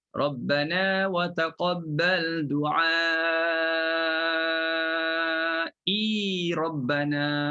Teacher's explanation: Jadi kalau sambung kena panjangkan i.